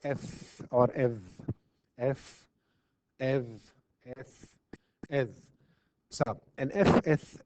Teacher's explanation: we have really the lower lip contacting the upper teeth so there is a contact